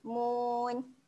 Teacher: Nun kat hujung ni kita akan matikan saja bunyi dia